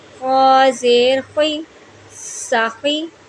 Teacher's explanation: خا کو بھی ہم نے حلق کے شروع والے حصے سے، ابتدائی حصے سے پڑھنا ہے